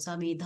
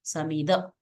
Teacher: समिध इति तत्र महाप्राण अस्ति, अल्पप्राण भवितव्यं, तत्र समिध इति समिद इति भवितव्यम्।